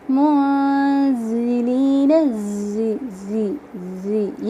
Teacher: ज़ा जो है ये भी हरूफ सफ़ीरिया में से है लेकिन इसमें बारीक सीटी है